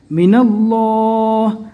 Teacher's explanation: اللہ کے نام سے پہلے زبر ہے، پور پڑھنا ہے